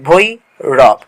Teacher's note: ভই হচ্ছে মুক্তদল এবং রব হচ্ছে তোমার রুদ্ধদল